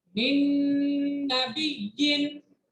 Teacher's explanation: नून की आवाज को नून के साथ मिक्स करेंगे और गुन्ना करके पढ़ेंगे।